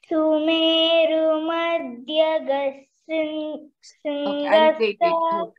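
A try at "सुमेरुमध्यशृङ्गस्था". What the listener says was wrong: Sumeru Madhya. You put more stress on there. You should put more stress on this dha. Shringastha.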